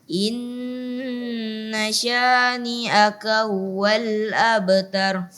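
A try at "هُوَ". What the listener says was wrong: Huwa juga tadi hanya masih kurang jelas. Ha dijelaskan lagi. Huwal, ha, hi, hu. Jadi dia bukan makhraj yang dari kaf. Inna syani'aka huwa. Bukan seperti itu cara membaca ha. Tapi dia makhraj tersendiri. Ya, dari makhraj tersendiri. Inna syani'aka huwal, bukan dari kafnya.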